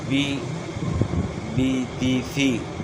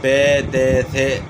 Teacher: عربی زبان میں معروف پڑھا جاتا ہے، مجہول نہیں پڑھا جاتا